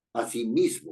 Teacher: El acento está en mis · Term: palabra grave